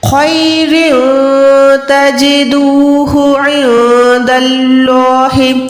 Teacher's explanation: نون ساکن کے بعد دال ہے، نون کو چھپائیں گے